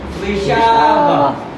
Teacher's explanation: گول تا کو وقف کرتے ہوئے ہاں میں بدلتے ہیں